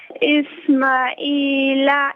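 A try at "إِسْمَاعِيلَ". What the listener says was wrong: ماں کو ایک منٹ میری بہن تو رک جائے نا، اسماعیل میں میم کو ذرا کھینچیں، اسماعیل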